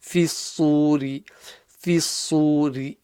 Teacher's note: Fa again is empty mouth. Sad is full mouth.